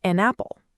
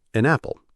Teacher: The n sound from an links to the a sound in apple. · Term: linking